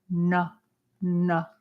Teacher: the dot under the N is a retroflex of n the tongue curls back n n like at the upper pallet n good and then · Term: retroflexive na